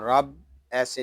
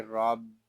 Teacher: را کے اوپر زبر ہے، را کو پر پڑھیں گے اور با مشدد ہے، اس کو جماؤں کے ساتھ ادا کریں گے